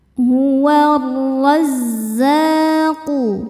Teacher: Cara bacanya alif lam dilewat, tidak dibaca, masuk langsung ke ro. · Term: alif lam syamsiyah